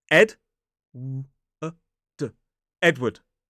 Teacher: Two syllables. Stress on the first. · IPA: /ˈedwəd/